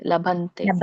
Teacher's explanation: ಸ್ವರ್ಗದ್ವಾರಂ ಅಪಾವೃತಂ, ಹಾ, ಅಪಾಮೃತಂ ಅಲ್ಲ, ಅವರ ಇದೆ ಅಲ್ಲಿ, ಅಪಾವೃತಂ. ಮತ್ತೆ ಲಭತೆ ಅಲ್ಲ, ಲಭಂತೆ. ಅಲ್ಲಿ ಅನುನಾಸಿಕ ಇದೆ ನೋಡಿ